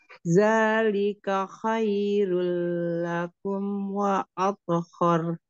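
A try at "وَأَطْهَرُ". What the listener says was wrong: Harinya jangan tebal, sayang. Wa apu haru. Roknya yang tebal.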